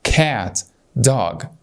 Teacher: بنشد على الكلمه كلها لان هي اساسا مقطع صوتي واحد